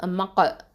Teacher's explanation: காஃப் சுக்கூன் வந்து கல்கலத்து சுகரா